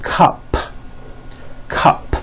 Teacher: it ends with an unvoiced p